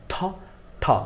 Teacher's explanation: ঠ হয়েছে মহাপ্রাণ, থ হয়েছে মহাপ্রাণ